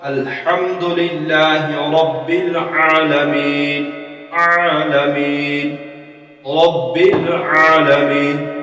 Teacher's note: تو عین حلق کے درمیانی حصہ سے ادا ہو